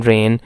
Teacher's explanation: And in rain we have an, which is also a nasal consonant.